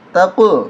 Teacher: قاف پہ قلقلہ ہوگا آواز ڈبل آئے گی